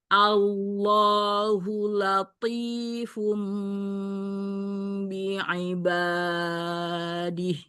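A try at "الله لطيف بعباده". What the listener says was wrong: Kepanjangan banyak Umi.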